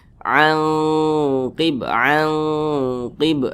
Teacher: maka cara membacanya itu disamarkan kemudian didengungkan akan tetapi karena dia ab'ad maka dengungnya itu dia lebih tinggi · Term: ikhfa Hakiki